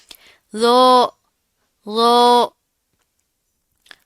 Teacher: اس میں سیٹی کی آواز نہیں ہوتی ہے، ٹھیک ہے؟ اس کو منہ بھر کے پراپر پڑھنا ہے، موٹا پڑھا جاتا ہے. اور اس کی ادائیگی کرتے وقت ہونٹوں کو آپ نے گول کرنے سے بچانا ہے، ہونٹ گول نہیں ہوں گے، بالکل فلیٹ رہیں گے، ٹھیک ہے؟